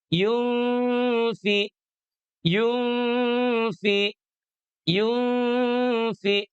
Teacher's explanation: sepertimana pada kalimat yunfiquun ya di nun matinya inilah yang ditahan. Yunfi yunfi yunfi tuh di an-nya dulu tahan yunfi jangan lama-lama ya tidak yunfiquun.